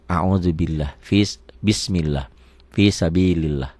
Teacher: Lafaz Allah dibaca tipis hanya satu. Kalau sebelum lafaz Allah barisnya di bawah.